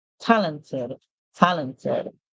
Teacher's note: when you add ed, because it ends with T, we hear the it sound.